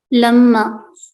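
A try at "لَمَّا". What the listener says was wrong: लम्मा, लम्मा नहीं, लम्मा, अलिफ की आवाज है।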